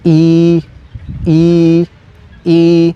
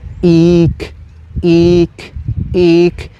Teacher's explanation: El siguiente sonido que tiene la I en maya es una vocal larga con tono bajo